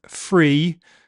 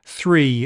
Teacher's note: Lots of English speakers in England do th fronting. They make f for th. So the words free, as in not confined, and 3, the number, sound identical to th fronters.